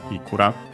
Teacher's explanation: still accented on the first mora, also that ikura